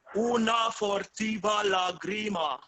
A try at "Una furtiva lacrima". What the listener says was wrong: Una U. The second one is a U, non O. Furtiva. So if you think una furtiva lacrima, just put some air in your voice.